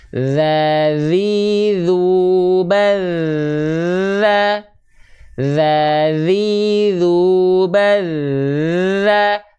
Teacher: huruf dalal dia dilafalkan tanpa nafas daza tuh hanya ngalir suara saja